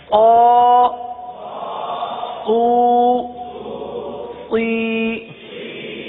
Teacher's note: صاد حروف مستعلیہ میں سے ہے, اس لیے صاد کو پر پڑھیں گے تو باریک نہ ہو